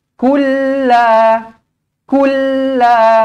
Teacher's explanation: lam kosong bertemu dengan lam sabdu di sini okey masukkan teruslah ke dalam yang bersabdunya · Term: Idam mutamailain